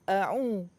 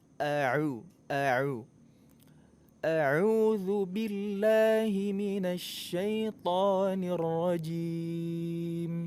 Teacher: makhraj huruf Ain itu ada di tengah-tengah kerongkongan bukan di hidung jadi kalau suara keluar dari hidung itu maksudnya enggak tepat Bukan